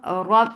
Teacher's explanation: There's shidda on ba. There is no flow of sound. Rab, the sound is cutting off.